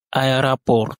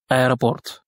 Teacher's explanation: vous remarquez que le premier O se prononce A. Aéroport. Tout simplement parce que ce premier O là n'est pas accentué.